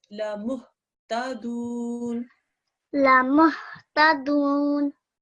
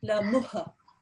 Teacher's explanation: it's not a qalqala sound. Okay. So don't do any sort of jerking sound.